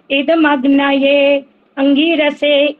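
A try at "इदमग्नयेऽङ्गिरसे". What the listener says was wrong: आपने भी वो गलती कर दी है जो मना किया था अभी। इदम अग्ने अंगिरसे इकट्ठा बोलना होता है, नहीं तो गलत हो जाएगा।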